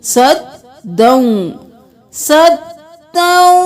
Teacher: दाल पे तशदीद है, 2 बार अदा करेंगे